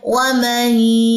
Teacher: इदगाम माल गुन्ना करें, मीम की ज़बर को या की शद से मिलाएं, वमही, और यहाँ पे गुन्ना भी होगा।